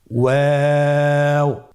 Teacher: 2 ঠোঁট গোল করে মাঝখানে ফাঁক রেখে হরফটি উচ্চারণ করতে হবে।